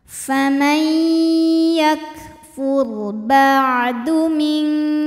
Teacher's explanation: Huruf ra sukun dibunyikan secara tafkhim karena harokat huruf sebelumnya dhammah. Cara bacanya ditebalkan.